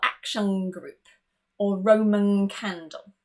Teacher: if the N is followed by a K or a G, we actually change it to that sound, which is that far back sound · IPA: ŋ